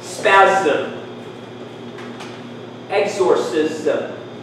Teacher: should have heard that i pronounce this with a c why there's another rule for words ending in sm the s becomes a z